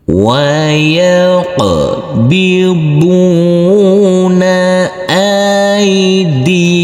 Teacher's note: huruf qaf harus kita pantulkan karena ini adalah bacaan qalqalah.